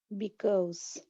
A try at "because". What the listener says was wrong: But a little bit more of a vibration at the end.